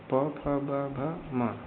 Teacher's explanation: ये ओष्ठ में आते हैं। ओष्ठ से बोले जाते हैं।